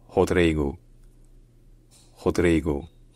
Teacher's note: le r au début d'un mot en brésilien ça peut se dire comme en français mais dire un peu comme un H · le dire un peu comme un H c'est finalement le plus courant au Brésil actuellement ensuite le DRI bon c'est pareil qu'en français sauf que ça